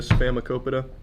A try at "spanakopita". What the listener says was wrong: Spam. Remember, there's an N in spinach